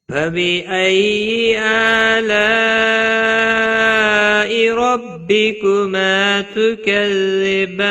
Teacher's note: آگے مد متصل ہے بڑی مد 3 سے 5 الف کے برابر کھینچ کر پڑھیں گے